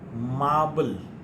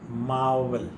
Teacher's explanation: b is a bilabial and v is labiodental